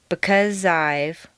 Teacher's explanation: the Z sound at the end of because and the I sound of I blend together smoothly. When you say the last line, pick up on the American intonation, you can feel each sound pushing into the next.